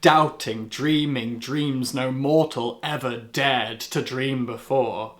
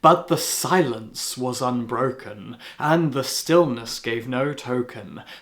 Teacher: D gives way to sibilance, the repetition of a softer S sound